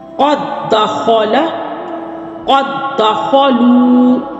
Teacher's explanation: یہ دونوں حروف ہم نام حروف ہیں، ایک جیسے حروف ہیں، پہلا ساکن ہے، دوسرا جو ہے وہ متحرک ہے۔ اب ان میں جو دال ساکن ہے وہ متحرک دال میں ضم ہو جائے گا، جب ضم ہو جائے گا تو اسی ضم ہونے کو ہم کہیں گے ادغام متماثلین.